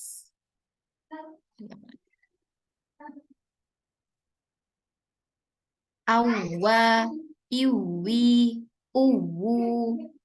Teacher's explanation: Dan dia memiliki sifat rokhawah, suaranya mengalir dengan sempurna atau terlepas.